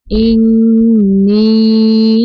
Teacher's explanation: نون مشدد پہ غنہ کریں گے